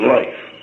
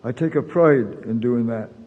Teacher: raised or centralized diphthongs were characteristic of the speech of residents of Martha's Vineyard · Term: centralization